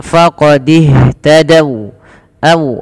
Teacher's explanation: waw di sini berhenti, wawnya dimonyokkan